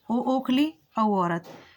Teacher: ओ और औ, कंठोष्ठ, इनका उच्चारण स्थान होता है कंठ और ओष्ठ।